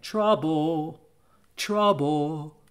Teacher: trouble doesn't really have an audible point of contact for that l